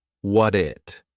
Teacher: I have a soft D because we have a t between two vowels which we pronounce as a soft D sound